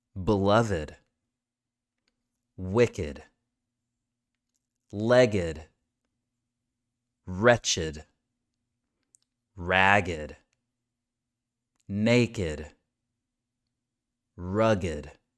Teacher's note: we're adding another syllable and it sounds like a really quiet, short id sound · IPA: /ɪd/